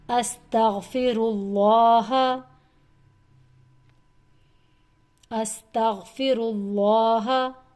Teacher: اللہ کا لام موٹا، کیونکہ اللہ کے لام سے پچھلا حرف را ہے اور اس پر پیش ہے، اس لیے اللہ کے لام کو موٹا پڑھنا ہے